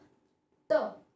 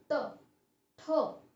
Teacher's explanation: तो जब हम ये ट वर्ग व्यंजनों का उच्चारण करते हैं तब हमारी जीवा यानी हमारी टंग तालव्य के आगे, यानी हमारे जो दांत है उसके अंदर वाला हिस्सा, ओके, दांत के ऊपर का अंदर वाला जो हिस्सा है वहां पे टच होता है, हमारी जीवा टच होती है